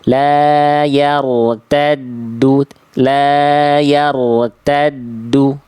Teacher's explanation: Jadi yang tebalnya hanya ro sukunnya aja.